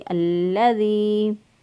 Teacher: लाम का मजबूती और क़ुव्वत से पढ़ा क्योंकि इसके ऊपर शद है, और ज़ाल जो है इसको नरमी से पढ़ेंगे।